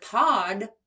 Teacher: And in the word pod, the d is voiced. I can feel that buzzing in my throat.